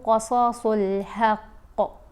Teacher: اب یہاں قاف صاد پھر قاف، ان کو ہم نے موٹا پڑھنا ہے، یہ ان کی آوازیں بھاری آوازیں ہیں